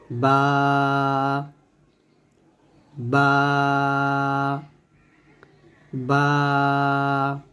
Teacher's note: দুই ঠোট মিল করে বা উচ্চারণ করতে হবে সুন্দরভাবে